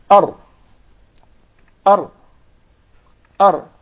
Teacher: beware, do not roll up the Ra. Do not repeat it.